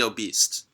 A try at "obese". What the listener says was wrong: Obese? Obese? Obese. You put a T at the end of it. Obese? Like she's a beast?